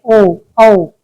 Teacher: कंठ और ओष्ठ दोनों का मिलाकर प्रयोग किया जाता है तो उन्हें कंठोष् कहते हैं